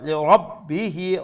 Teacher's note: রা ফুল মাউথ, বা হাজ শাদ্দা ডাবল লেটার ডাবল সাউন্ড